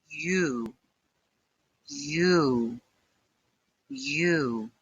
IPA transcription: juː